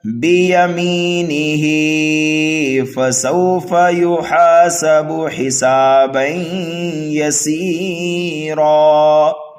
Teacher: یہاں کو ہا 1 الف کے برابر کھینچنا ہوگا